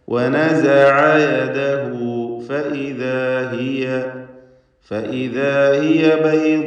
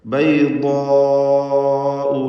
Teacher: നിർബന്ധമായും 4-5 ഹറക്കത്തിൻ്റെ അളവിൽ അലിഫിനെ ദീർഘിപ്പിക്കുക. ദീർഘത്തിലും തഫ്ഖീം വേണം. ബൈദാഉ അതിൻ്റെ മഖ്റജിൽ നിന്ന് അഥവാ നാവിൻ്റെ സൈഡിൽ നിന്ന് ഉച്ചരിക്കണം. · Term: മദ് മുത്തസിൽ